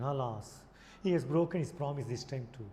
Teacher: alas, a falling intonation